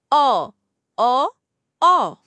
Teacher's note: এটি বাংলায় অ এবং আ এর মাঝামাঝি একটি উচ্চারণ।